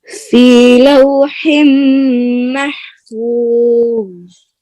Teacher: آخر ضا میں قلقلہ نہیں کرنا